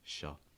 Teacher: Using a dark L, just kind of raising your tongue a little bit.